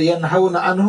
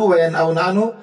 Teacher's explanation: ان اختلافا فی حرفین، اگر اختلاف ہو دو حرفوں میں، غیر متباعد المخرج، اور دونوں متباعد المخرج نہ ہو، دور کا مخرج نہ ہو بلکہ قریبی مخرج ہو، جیسے ینہون عنہ وینأون عنہ، اس میں ہا اور حمزہ ہے اور دونوں قریب المخرج ہے، دونوں کا مخرج ہے اقصائے حلق